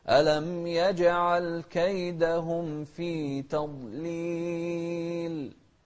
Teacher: والضاد هو حرف الاستطالة تضليل ونفخمه